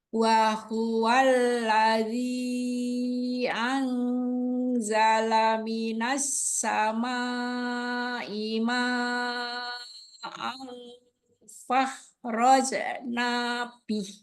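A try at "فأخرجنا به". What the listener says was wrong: Oke, ini bukan fa. Ini ada huruf hamzah. Fa'ah. Roh.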